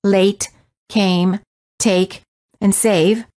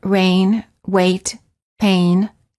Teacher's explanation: the lips are not rounded and they are relaxed and the tongue is tense moving from mid-high position to high position